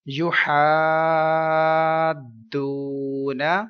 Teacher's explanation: مدہ letter کے پاس سکون اصلی ہے تو مد لازم ہے، 3 سیکنڈ لمبا کریں گے، اور ادھر واو مدہ ہے 1 سیکنڈ لمبا کریں گے